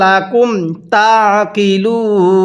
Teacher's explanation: ওয়াকফ করলে তিন আলিফ টান দিব